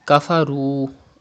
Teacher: there is pesh before waw sakin, it is waw madda. You have to stretch up to 2 harakat.